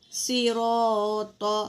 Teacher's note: صاد بھی پر ہے، را بھی پر ہے، موٹا پڑھیں گے